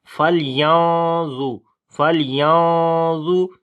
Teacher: نون ساکن ہے اس کے بعد ضا آ گیا، اخفا کریں گے، موٹا اخفا ہوگا ، فَلْيَنظُ، فَلْيَنظُ، ضا کو موٹا پڑھیں گے، را کو باریک